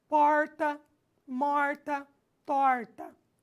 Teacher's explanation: O R que eu utilizo aqui é um R chamado R retroflexo